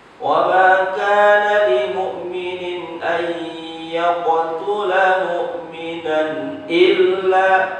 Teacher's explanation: Jadi mu'minan illa hukumnya adalah jelas atau izhar karena disebabkan tanwin bertemu huruf alif.